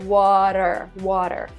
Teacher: And she said, not only do we pronounce the R in the end of the word, water, but we also pronounce R in the middle of the word, the T in the middle of the word. When we say water, we don't even say T, we say R, like water, water.